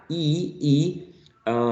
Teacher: closer to the teeth EEE eeee and it's really high e your tongue is almost touching the roof of the oral cavity the upper part of the oral cavity e okay so it's